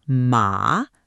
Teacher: A dipping then rising tone, like a little scoop in your voice